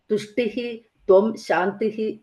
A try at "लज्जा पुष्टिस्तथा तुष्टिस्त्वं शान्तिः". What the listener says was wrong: And that second line, tushtis is there. If you have a visarga, then put a is there. Tushtis. Tushtis. Is, yes.